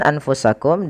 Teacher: maka suara nunnya disamarkan kepada huruf Fa karena Fa termasuk salah satu dari huruf ikhfa